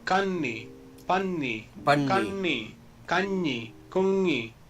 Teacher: The Malayalam accent might seem a little nasal in comparison to other languages.